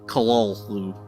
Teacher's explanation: The actual sound, as nearly as any human organs could imitate it, or human letters record it, may be taken as something like Cthulhu, with the first syllable pronounced gutturally and very thickly